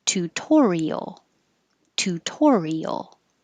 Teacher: that second T stays a T because it's in the stressed syllable